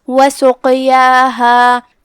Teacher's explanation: جو کہ اس پہ جزم ہے تو یہاں قاف کا حکم ہوا قلقلہ، لہذا اسے ہلاتے ہوئے یہ کلمہ کو ادا کرنا ہے